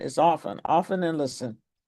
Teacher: You don't pronounce the T. It's not a hard T.